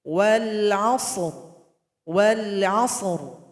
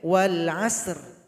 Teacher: Ra di sini kita sukunkan karena berhenti. Sehingganya dia didahului 2 huruf. Itu huruf shad yang sukun dan huruf ain yang fathah. Maka di sini dibaca tebal.